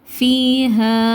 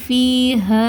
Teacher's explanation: சுக்குன் பெற்ற யாக்கு முன்னாடி கஸ்ரா இருக்குது. ஸோ இது யா மத்தா 2 ஹரக்கத்து நீட்டி ஓதணும்